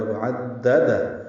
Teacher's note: وعددہ، عین کو دال سے ملانا ہے، 2 دالیں ہیں، 3 دالیں پڑھنی پڑیں گی، پہلے عین کو دال سے ملانا ہے، پھر دال پر زبر ہے، پھر دال پر زبر ہے۔ وعددہ، دال کو ہا سے ملا دیں گے، ہا ساکن ہے، اس پہ ہمس ہوگا۔